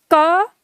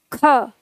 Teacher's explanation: क की तुलना में ख में ज्यादा हवा निकल रही है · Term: महाप्राण